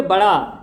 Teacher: जीभ उत्क्षिप्त होकर उछल कर आती है।